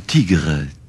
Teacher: faut faire vibrer la langue contre le fond de la bouche en haut